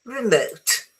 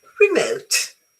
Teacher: The word remote adjective or noun is generally stress on the second syllable, not the first.